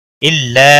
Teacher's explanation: अलिफ मद्दा है, एक अलिफ के बराबर खींच कर पढ़ेंगे